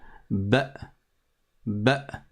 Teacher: C'est la hamza, le son a ou i, sauf que là il y a un soukoun dessus, donc il n'y a pas de voyelle après, et ça fait un blocage, une coupure.